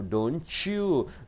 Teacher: T plus Y, chew